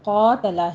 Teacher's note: قوف کے اوپر فتح قائمہ ہے، اس کو پر پڑھتے ہوئے 2 کاؤنٹ کیجئے